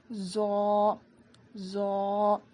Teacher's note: زو. زبان کی نوک کو سامنے کے دونوں دانتوں کے کنارے میں لگانے سے زو ادا ہوتا ہے. اس کو ہم 1 الف کے برابر کھینچ کر پڑھیں گے.